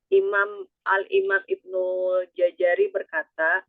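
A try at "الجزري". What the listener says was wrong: Jazari, bukan jajari, jazari. Jaza, ja baru za. Jaza.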